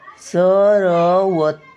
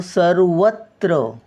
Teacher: सर रचा उच्चार येतो नंतर व चा उच्चारतो सर र चा पूर्ण उच्चार येत नाही सर्वत्र बघा सर वत्र सर रचा उच्चार पहिला येतो नंतर व